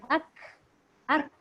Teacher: pangkal lidah kita tu kan untuk menyebut huruf kaf, kita turunkan supaya dia berbunyi angin